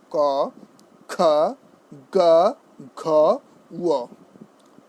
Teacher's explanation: এবার আসুন আমাদের যে কণ্ঠ থেকে যে শব্দের যে বর্ণের উচ্চারণ হয়, জিভের মূল তালুর কোমল অংশ স্পর্শ করে